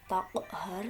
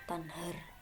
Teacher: huruf qaf dan nun ini makhrajnya ketika kita ucapkan sangat jauh. Taqhar dan tanhar, jauh ya.